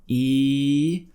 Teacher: tongue high in the mouth and a big smile